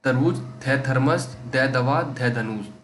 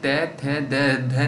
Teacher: जब भी बोलोगे तो जीभ जो है जाके सीधा दांत को छुएगी